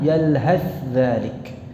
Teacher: Jadi kalau dibaca dengan izhar, tha-nya tidak hilang, yalhaz dzalik.